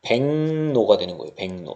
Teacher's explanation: 기역이 이응으로 바뀌고, 그 다음에 이 이응 때문에 리을이 뭘로 바뀐다? 니은으로 바뀝니다. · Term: 비음하